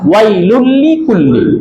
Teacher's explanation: কোনো গুন্না নাই, মিলায় পড়তে হবে, গুন্না ছাড়া, স্পষ্ট করে মিলায়া, গুন্না ছাড়া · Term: ইদগামে বেলাগুন্না